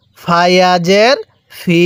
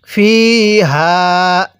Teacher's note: ফায়ের মধ্যে কিন্তু আমরা এক আলিফ টান দিব, কারণ জেরের পরে ইয়া সাকিন থাকলে সেখানে আমাদের এক আলিফ টানতে হবে।